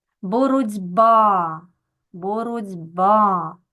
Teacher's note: коли у нас глухий приголосний стоїть перед дзвінким то він стає таким самим дзвінким як і по наступний звук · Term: уподібнюється